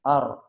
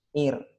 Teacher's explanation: Jadi misalnya nanti baca fathah, diawali fathah, ro itu tebal, ar. Kalau tipis diawali kasro, ir.